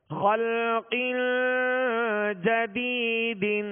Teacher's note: اسی طرح جدیدن، یہاں یا مدہ ہے، یا مدہ کو ایک الف کی مقدار کھینچ کر ادا کریں گے · خلق جدید. تو خلق، یہ جو آواز ناک میں لے جا کر ٹھہرائی اسے غنہ کہتے ہیں